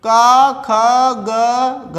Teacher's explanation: इनका उच्चारण स्थान क्या होगा? कंठ होगा।